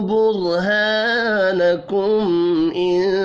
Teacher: میم ساکن کے بعد حمزہ ہے، اظہار شفی ہوگا، غنہ نہیں ہوگا